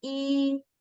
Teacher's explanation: so first tone the high and flat pitch